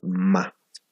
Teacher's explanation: Si ustedes pronuncian la ma, su labio inferior y superior pues hacen contacto y obstruyen la salida del aire, ¿verdad? Y de repente se abre ma. · Posteriormente tenemos el sonido consonántico, bilabial y nasal a la vez, ¿no? La ma.